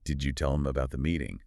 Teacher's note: This is a classic demonstration of how an initial consonant sound in a function word can just disappear to speed things up